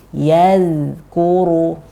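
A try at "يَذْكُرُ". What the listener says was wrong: Masih ada z dikit. Nah, itu yang harus dihilangkan. Karena zal dia bukan qalqalah. Yazkuru.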